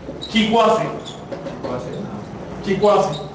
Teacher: El O de Chicosé se dobla en diptongo.